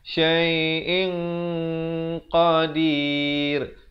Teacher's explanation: Ikhfa di sini dibacakan dengan tebal kerana qaf merupakan huruf isti'la.